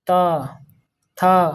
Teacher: त वर्ग से दंत से यानी दांत त थ तो ये सब दांत छूता है